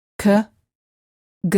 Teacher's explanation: To produce these two sounds, the back of the tongue presses up against the back of the mouth and then releases.